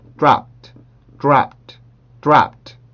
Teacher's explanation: 근데 이 스펠링상, 발음 기호상으로 D를 썼지만 앞에 있는 소리가 무성음이기 때문에 이거는 트의 소리를 갖습니다